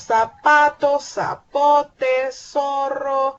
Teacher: Para nosotros, en El Salvador y en muchos países de Latinoamérica, la letra Z está representada por el fonema S, ¿verdad? Nosotros decimos zapato, zapote, zorro, etcétera, ¿verdad?